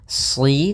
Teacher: di sini shadnya tebal, jangan dibaca dengan huruf sin.